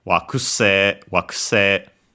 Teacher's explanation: Notice in this case, as a reminder, that the U in ku is barely heard, if at all, because it's between unvoiced consonants